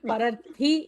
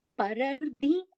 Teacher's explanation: In Telugu, we actually combine, we mix up the second Mahaprana Tha and Mahaprana Dha